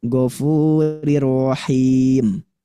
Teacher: ri-nya harus dibaca tipis atau tarqiq